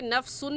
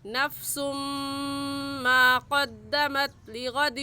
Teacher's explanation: اس تنوین پر غنہ کرنے کے ساتھ ساتھ ادغام بھی ہوگا. ادغام کہتے ہیں کہ دیکھنے میں ایک لفظ ہو اور پڑھنے میں 2 لفظ پڑھے جائے.